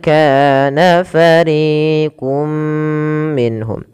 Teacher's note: masukkan suarah tanwin pada lafal qun ke huruf mim kemudian ditahan mimnya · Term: idgham bhunah